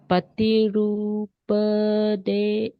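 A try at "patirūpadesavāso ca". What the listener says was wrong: So remember, when it's short, don't drag it. Desa vasocha. When it's short, we tend to join to the next one.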